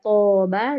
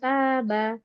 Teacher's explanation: Taba, kan mirip ya toba dengan taba. To panjang dan dia tebal alifnya. Ta dia tipis.